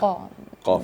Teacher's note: Di belakang tapi mengarah ke tengah. Tapi kalau qaf itu di belakang sekali. Di pangkal lidah.